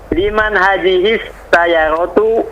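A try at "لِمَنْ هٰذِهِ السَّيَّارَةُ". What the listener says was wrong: Sayyaratu. Ya-nya panjang.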